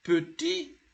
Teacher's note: when it is petit, the T is not pronounced